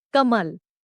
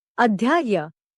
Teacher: in North Indian languages like Hindi and also in Nepali, the sound of the last consonant, if it only has an implicit vowel, the pronunciation is cut off short